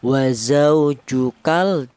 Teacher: lam matinya ini dibaca jelas atau namanya izhar qamariah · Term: idhar qomariyah